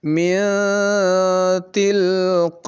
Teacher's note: nun matinya, nun sukunnya itu dibaca samar. Tidak jas, tidak seperti izhar. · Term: ikhfa akrab